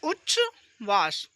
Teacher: यदि ता के बाद सा हो तो ता है ना च में तथा सा है ना छ में बदल जाता है